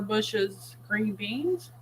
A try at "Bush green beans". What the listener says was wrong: Bush beans, not bushes.